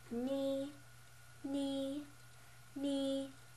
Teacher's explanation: So the first tone flat tone would be knee.